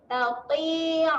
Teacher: huruf ta huruf tebal, tebalkan bunyi dia, muncung sedikitlah.